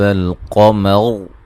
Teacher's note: قمر یہاں را وقفاً وصلاً موٹی ہوگی